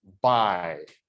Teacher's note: you would transcribe it as an a vowel, which is an A basically, and then a y glide, which we write as a J, but it's like the Y sound. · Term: diphthong